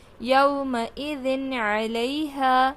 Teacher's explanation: من غیرہ، یومئذ علیہا، یومئذ، دال 2 زیر ذن ہے، تنوین ہے، تنوین کے بعد حرف حلقی میں سے عین آ رہا ہے تو نون کی آواز کو ہم ظاہر کریں گے۔ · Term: نون کی آواز کو ظاہر